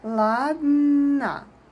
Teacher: The last sound is a because unstressed o is always a.